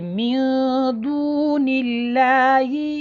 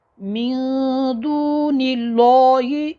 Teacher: اس سے پہلے اگر زیر آ جائے تو لفظ الجلالہ کا جو لام ہے یہ باریک پڑھا جاتا ہے